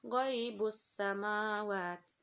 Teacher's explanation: Cara membacanya dengan mentasydidkan sehingga alif lam tidak terbaca. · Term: alif lam syamsiyah